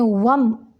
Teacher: یہاں پہ میم ساکن کے بعد را ہے، یہاں پہ اظہار شفوی کا قاعدہ ہے، میم کو لمبا نہیں کریں گے، صرف ظاہر کریں گے